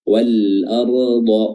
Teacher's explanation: huruf ra-nya di sini tebal, ya, tebal karena dia sukun yang didahului oleh fathah.